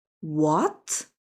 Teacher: The second tone, rising up like, what? Surprising sound.